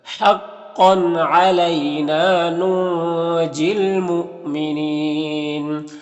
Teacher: یہاں پر نون میں اخفا ہوگا، اور یہاں پر الف لام حروف قمری میم کے شروع میں ہے تو لام کو پڑھیں گے، الف کو نہیں پڑھیں گے۔ یہاں پر حمزہ ساکنہ ہے، واو کی شکل میں جھٹکا لگے گا، اور یہاں پر وقف کی صورت میں مد عارض وقفی ہوگا تو اس طرح سے پڑھیں گے۔